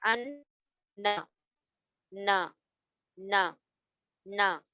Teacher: جب آپ کے زبان کے کنارے کون سے ہوتے ہیں, یہ ہے کنارے, یہ ٹچ ہوتے ہیں اور نون ادا ہوتا ہے. جب اوپر کے پیلٹ سے ٹچ ہوتے ہیں تو نون ادا ہوتا ہے